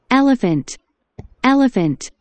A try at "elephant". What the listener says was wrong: Elephant. 엘레판트가 아니고 엘레펀트. 엘레판트가 아니고 엘레펀트. 쓸 때는 엘레판트라고 그러니까 소리 낼 때는 엘레펀트.